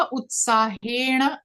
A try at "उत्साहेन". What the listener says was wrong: मूर्धन्य नकार won't come. Simple. दंत्य नकार. उत्साहेन.